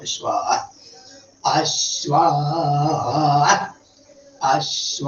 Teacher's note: അശ്വശബ്ദം എപ്പോഴും ആദ്യദാത്താണ്. ആനുദാത്തം ശ്വാന് സ്വരിതം. അപ്പൊ അത് ഇനി എവിടെ വന്നാലും അത് ഇതിലെടുത്താൽ മതി.